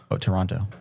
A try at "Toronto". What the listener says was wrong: Toronto. The T isn't pronounced.